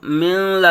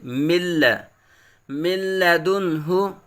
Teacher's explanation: یہ غلطی کر دیتے ہیں، من لا نہیں پڑھیں گے بلکہ نون ساکن اور لام میں ادغام بلا غنہ بغیر غنہ کے یہاں پڑھیں گے